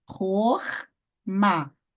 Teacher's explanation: sílaba fechada recebe uma vogal breve, que é o nosso Kametz Hatuf, que é um O